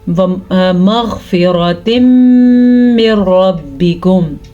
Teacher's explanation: यहाँ पे जो आपको रुकने की आवाज़ आई है दर हकीकत उसी को गुन्ना कहते हैं।